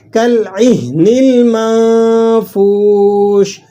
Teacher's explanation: اس کو آپ نے ہا کو سینے سے ادا کرنا ہے۔ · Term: چشمے والی ہا